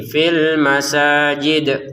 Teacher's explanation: Dalnya dipantulkan ya karena kita berhenti fil masajid kan.